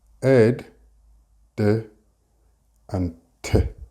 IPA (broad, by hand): ed, d and t